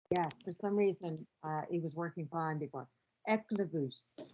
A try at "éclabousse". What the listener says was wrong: No, that was in English. Éclabousse. Éclabousse. Éclabousse.